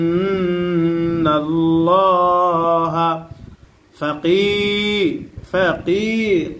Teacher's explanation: জেরের পরে ইয়া সাকিন মাদের হরফ। আর মাদের হরফ হইলে এক আলিফ টানিয়া পড়তে হয়, ইহাকে মাদ্দে তবাই বলে।